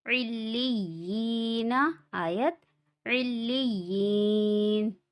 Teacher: یہاں پہ حروف مدہ ہے، یعنی یا ساکن سے پہلے زیر ہے، اس لیے ایک الف کے برابر کھینچ کے پڑھنا ہے